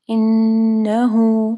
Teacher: انہو نون مشدد پہ جو ہے غنہ کرنا ہے، پھر ہا کے اوپر پیش ہے، اس کے بعد مد صلہ صغرا ہے، یہ جو چھوٹی سی واو نظر آ رہی ہے آپ کو، تو اس کو 2 حرکات کے برابر لمبا کرنا ہے ہا کو